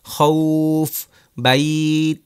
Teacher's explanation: আজকে আমরা শিখেছি মাদ্দে লিন। লিনের হরফের পরের হরফে অক্ফ হলে মাদ্দে লিন হয়, টানতে হয় 2 আলিফ